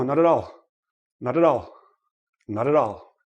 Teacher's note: Now, another thing is when a word ends in a consonant and the next word begins in a vowel, make sure you roll it in, right? Roll the consonant into the vowel and separate the syllable before.